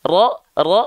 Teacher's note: huruf ro ketika fathah dibaca dengan vokal o